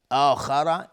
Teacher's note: آخر اینجا مد بدل هست به مقدار 2 حرکت کشیده میشه.